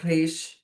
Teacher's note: Então, cof, o re, que é esse som aí de r, é um som gultural também, mas a gente pronuncia ele vibrando a língua